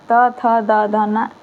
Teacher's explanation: जब बोलते हैं तो आपका जीभ दांत को छुएगा, तो इसे दंत व्यंजन कहा जाता है।